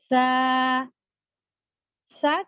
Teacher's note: سا کا مخرج دونوں دانتوں کے درمیان زبان رکھ کر نرمی سے ادا کرنا ہے اور اس میں سیٹی کی آواز نہیں آنی چاہیے